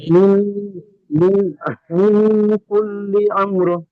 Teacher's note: মিন গুন্না হবে, নুন সাকিনের পরে হরফে ইকফা কোনটির মধ্যে কাফ এসছে।